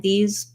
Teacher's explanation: if i'm just saying these by itself i don't need a strong z i don't need to say these um it's light and soft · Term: z sound